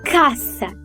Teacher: Já o S é surdo ou desvozeado, ou seja, sem vibração, como em caça, do verbo caçar.